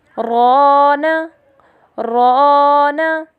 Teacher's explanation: حرف الف سے پہلے حرف را موجود ہے، جو اپنے اوپر زبر ہونے کی وجہ سے موٹی ادا کی گئی ہے، جس کی وجہ سے ہم حرف الف کو بھی موٹا ادا کریں گے، جیسے رانا۔